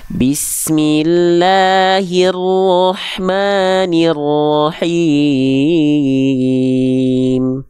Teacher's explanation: Apakah ada bunyi vokal A yang mingkem mulutnya? Apakah ada bunyi vokal O yang monyong mulutnya? Tidak ada, semuanya buka mulut.